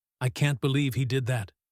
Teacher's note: With a soft, quiet voice. Now I sound sad or hurt.